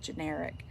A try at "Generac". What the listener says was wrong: Generac. You're saying generic. It's Generac.